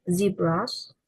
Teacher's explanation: The voicing is voiced, placed in alveolar, and manner is fricative.